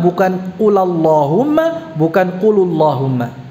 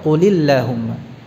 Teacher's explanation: Jadi hukum asalnya atau kaidah, sebenarnya kaidah utamanya, kaidah asalnya, pertemuan antara dua sukun itu caranya bagaimana? Dengan mengharakatkan sukun yang pertama bil kasri, dengan kasrah